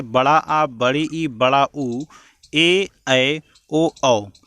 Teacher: जिन्हें बोलने में स्वर से दुगना समय लगे, जिन्हें बोलने में ह्रस्व स्वर से दुगना समय लगे उन्हें हम दीर्घ स्वर कहते हैं, जिनकी संख्या 7 होती है।